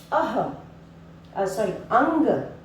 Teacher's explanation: जब हम उसका उच्चारण करते हैं तो नाक और मुंह दोनों से पढ़ते हैं, इसीलिए इनको हम अनुस्वार भी कहते हैं।